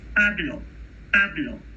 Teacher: In Spanish, it's Pablo, Pablo. You don't hear a puff of air there.